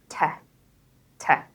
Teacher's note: You're basically stopping the air by blocking it with your tongue and then release it into a small kind of burst. The way I like to think of it is plosive, explosive, explosion, burst in your mouth. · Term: plosive sound